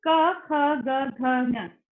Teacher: ये कहाँ से निकल रहा है, आपके गले के पीछे के हिस्से से